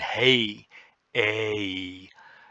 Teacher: syllable and word building point of view it's one sound a it's just a complex sound that begins in one place and ends in another it begins mid and it ends High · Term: diphthong